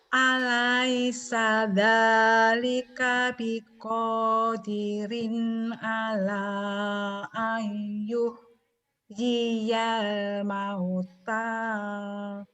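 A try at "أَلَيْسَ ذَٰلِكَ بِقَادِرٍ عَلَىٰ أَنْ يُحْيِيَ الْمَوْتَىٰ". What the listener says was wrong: lagunya nggak jelas ya, bacanya udah bener. Kalau mau terakhir turun. Coba turun nadanya.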